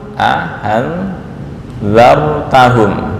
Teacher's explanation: memasukkan Alif di antara dua hamzah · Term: idkhal